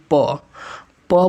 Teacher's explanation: प प बोलते हैं तो हमारा ओट से ओट सट जाता है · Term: ओष्ठ